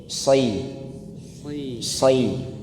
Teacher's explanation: kasrohnya Bapak Ibu dilebarin. Kalau dilebarin otomatis nanti ada suara yang agak menukik. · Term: huruf shad